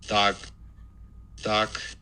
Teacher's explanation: noisy spectrogram but here's the release burst at this point and there's no aspiration after it just background noise